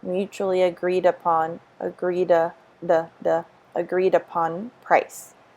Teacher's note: we have the Y intrusion because it's vowel to vowel